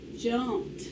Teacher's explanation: You hear the t sound instead of the d sound. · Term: suffix ED